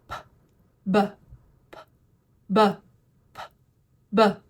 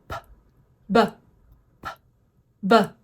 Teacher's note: For both of these sounds, your lips start closed, they pop open with a little puff of air, and it's a quick sound. For P, your voice box is off.